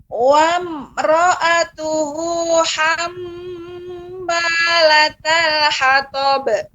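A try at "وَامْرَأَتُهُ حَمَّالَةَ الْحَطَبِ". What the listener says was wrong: Ya, tapi ketika Ibu menggunakan nada tinggi masih terasa berhenti. Wamro'a. Akan tetapi tetap nanti dilatih di rumah ya pengucapannya, sekalipun nadanya tinggi tetap dia tidak seperti jeda. Wamro'atuhu misalnya iya Bu.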